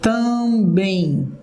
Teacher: Quando você fala também, eu tenho um I escondido aí.